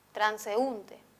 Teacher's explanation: En transeúnte, la sílaba más perceptible es la U, transeúnte. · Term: sílaba tónica